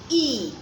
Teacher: If you're taking a look at how my lips are shaped when making the sounds, you notice for the first sound, E, it appears as if I'm smiling and my lips are spread. And then my tongue is behind or at the back of my lower front teeth with the blades spread. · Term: long sound of letter E